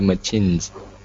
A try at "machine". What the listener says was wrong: Machine, only with an N. Machine. Okay, this is an SH sound. It's a French word. Machine.